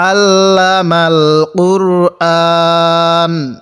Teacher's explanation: আইনটা চাপ দিয়ে পড়লে আইনটার উচ্চারণটা সহি হবে আর না হলে আমরা অনেকে আইনটাকে হামজা পড়ে থাকি